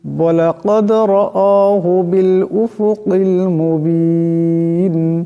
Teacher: এখানে রাকে মোটা করিয়া পড়তে হবে।